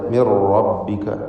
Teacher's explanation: മിൻ എന്നതിലെ സാക്കിനത്ത നൂനിന് ശേഷമുള്ള റായിൽ പൂർണ്ണമായും ലയിപ്പിച്ച് ഇദ്ഗാം ബിഗൈരി ഗുന്ന നൽകി ഉച്ചരിക്കുക, മണിക്കാതെ മിർ റബ്ബിക എന്ന്.